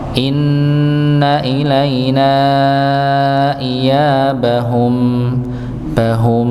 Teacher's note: Berikutnya mim pada akhir ini mim sukun nggih. Maka dia masih memiliki dengung. Maka jangan terpotong. · mim pada akhir ini, mim sukun, maka dia masih memiliki dengung, maka jangan terpotong. Inna ilaina iyabahum, bahum, ya, bukan iyabahum, tapi iyabahum, ada sedikit aliran, walaupun alirannya sedikit sekali.